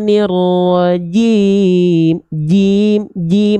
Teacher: Jim enggak punya sifat hams enggak punya sifat mengalir nafas atau bahkan percikan nafas pun tidak